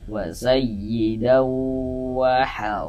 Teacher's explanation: Jadi di bagian daunya itu suaranya itu kita tahan ya. Kita panjangkan sejenak sepanjang dua harakat. Kita dengungkan, kita gunahkan. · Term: idgham ghunah